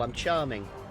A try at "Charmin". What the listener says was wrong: Yeah, but I think you're pronouncing it wrong. You're putting a G on the end. You're charming.